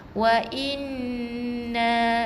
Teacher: Tak boleh wa inna saja. Wa inna, bukan saja tekan, kita kena dengung sebab nun yang bersabdu wajibal gunnah.